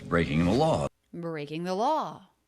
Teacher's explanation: the first syllable there does have more length and has that up down shape